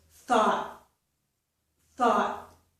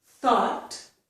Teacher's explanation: So it's called an unreleased T, and it's just my tongue up there, but it doesn't release.